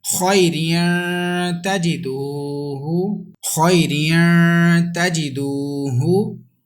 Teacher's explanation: this waw will be stretched equal to 1 second · And there is ikhfa because ta is ikhfa letter, and ta has come after tanween, that's why we have to do gunna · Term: waw madda